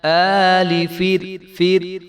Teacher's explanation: را کو جو ہے وہ موٹا نہیں ہونے دیں گے